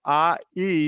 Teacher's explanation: So you'll forgive me for that, and so let me call it a patach malay. So that's a combination of the ah sound followed by the yud, and it's almost like adding e to the previous vowel